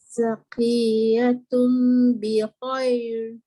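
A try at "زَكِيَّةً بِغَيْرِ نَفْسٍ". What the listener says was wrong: Jangan baca tum. Dia bukan tum. Tu ta tu. Selalu orang tertukar. Tu balik atas ta. Zakiyatan bi ghairi nafsin.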